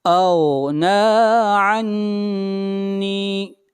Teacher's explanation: نون کے اوپر شد ہے، غنہ کریں گے اور نون کو کھینچ کر پڑھیں گے ایک الف کے برابر، یہاں پر یا مدہ ہے۔